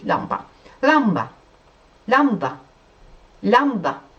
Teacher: de lambanın l'si olarak böyle çok kalın değil Çok yince değil biraz böyle dilinde böyle dolanan bir l gibi olarak söylüyoruz